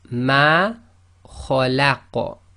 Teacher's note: because the qaf becomes sakin, that's one of the qalqala letters, so it becomes an echo